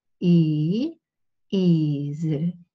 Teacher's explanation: it's a very long E sound